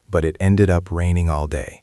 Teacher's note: You want to drop your pitch a little to show disappointment.